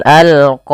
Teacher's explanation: Kemudian pada lafal al-qawaidah, alnya alif lam qamariyah, jelas suara lamnya